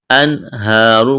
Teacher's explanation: جیسے یہاں نون ساکن کے بعد ہا ہے، انہارو کڑا زبر، ایک الف کے برابر کھینچنا ہے، را کو موٹا کریں گے